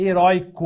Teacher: heróico é derivado de herói continua com ditongo aberto